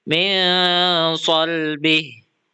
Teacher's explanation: Contoh Quran surah at-harq ayat 7 pada lafaz min shbih nun sukun bertemu dengan sh sehingga dibaca min shbih dengan suara n yang disamarkan sebelum masuk ke huruf sh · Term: ikhfa